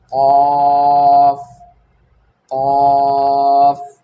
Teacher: ज़ुबान की जड़ यानी ज़ुबान का आखिर का हिस्सा जब ऊपर के नरम तालू से लगे तो खौफ अदा होता है